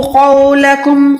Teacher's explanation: قوف موٹا حروف ہوتا ہے، حروف مستعلیہ میں سے آتا ہے، ٹھیک ہے۔ قوف پہ بھلے کوئی بھی حرکت ہوگی لیکن قوف موٹا ہی ادا ہوگا۔